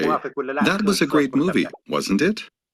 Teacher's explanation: I'm only about 80 to 90% sure that my friend will agree with me in this case I would use Rising intonation